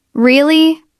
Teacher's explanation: If I say really with a rising tone, it sounds surprised. If I say really with a falling tone, it might sound like I don't believe you.